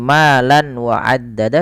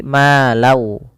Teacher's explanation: Karena bertemu dengan huruf waw, nanti setiap kita membacanya, tanwinnya, bunyi nunnya dimasukkan ke waw sehingga diganti dengan w. Jadi bukan lagi malan wa addada tapi malau. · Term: idgham bi gunnah